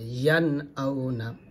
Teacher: নুন সাকিনের পর হামজা আসছে আউনা স্পষ্ট হবে